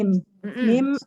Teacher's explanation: Dengan merapatkan bibir disertai dengan gunah. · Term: huruf mim